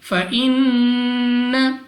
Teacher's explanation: نون مشدد غنہ کر کے پڑھیں گے، اور غنہ سے مراد یہ ہے کہ ناک میں لے جا کر پڑھنا، یعنی اس کو بھی ہم نے 2 سیکنڈ تک کھینچ کر پڑھنا ہوگا۔